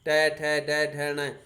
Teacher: तो इन वर्णों का जब हम उच्चारण कर रहे हैं तो जीभ मुख के ऊपर वाले भाग को छू रही है, मूर्धा भाग को छू रही है, ऊपर वाले भाग को छू रही है। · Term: मूर्धन्य वर्ण